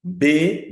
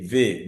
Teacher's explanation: B is bilabial sound. V is labio-dental. B, V, they are both occlusive, that's for sure.